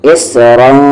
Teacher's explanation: سے 4 حرکت کے ایکول، اسرا، اس صاد ہیوی ہے، اسرا، را بھی ہیوی ہے اور پلس یہاں پر اخفا ہو رہا ہے